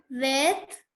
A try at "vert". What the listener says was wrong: Where? Not T. Do not pronounce T.